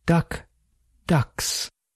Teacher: K is voiceless and s is voiceless.